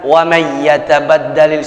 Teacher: ketika kita idghamkan kita masukkan kepada bunyi huruf ya, wa may yatabaddalil, silahkan nggak pakai gunnah, tapi ini idgham bi gunnah, artinya harus perhatikan gunnah.